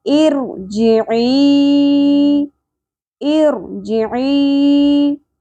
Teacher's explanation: आइन ज़ेर के साथ या साकिन हर्फ मद्दा है, एक अलिफ के बराबर खींचना था लेकिन आगे हमज़ा आ गया सबब मद्दा, मद्दे मुनफसिल करेंगे, 3 अलिफ के बराबर खींचेंगे